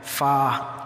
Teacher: फ़ा ऊपर के दांतों के किनारे और निचले होठ के तर हिस्से से अदा होता है।